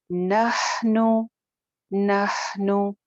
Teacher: نون کی پیش لمبی نہ ہونے پائے